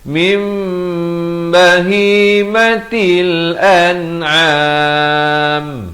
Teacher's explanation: Di sini mim mati bertemu mim, idgham mislan saghir, dengungkan dua harakat, dan kemudian mim iqlab, tukarkan daripada bunyi nun kepada bunyi mim, juga dua harakat